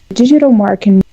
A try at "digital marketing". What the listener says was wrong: Yeah, I'm pretty sure I'm hearing a J sound, kind of a DJ sound if you think of Portuguese, I think. But yeah, we want to hear a D sound. Like if you conjugate dar para de, e fechado, de, almost that. Digital.